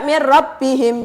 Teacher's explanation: melebur bunyi nun mati atau tanwin ke dalam huruf sesudahnya secara sempurna tanpa dengung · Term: idgham bila gunah